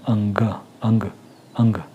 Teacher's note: जो अनुस्वार होता है आपका इसका जो उच्चारण होता है केवल नाक से होता है